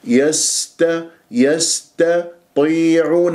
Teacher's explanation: والسين ساكنة يجري فيها الصوت والنفس من أحرف الصفير. يست يست يستطيعون، الطاء مفخمة مرتبة أخيرة خامسة، حتى أنت لا تقول يستطيعون، يسط خطأ، يست يستطيعون، يستطيعون، يستطيعون.